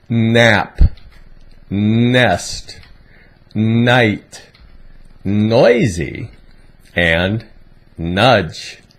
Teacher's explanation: This is a nasal sound, similar to how the M sound is made, M, except that your mouth is open.